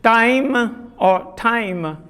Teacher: What is the difference between the initial ta sounds? The difference is of aspiration, we all know.